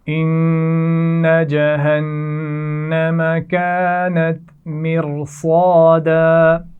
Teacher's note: ان جہنم دونوں نون پر غنہ کیا جائے گا